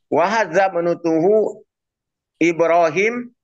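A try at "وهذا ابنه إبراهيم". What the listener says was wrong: Mana huruf ta? Tidak ada huruf ta di sini. Wahadza banuhu.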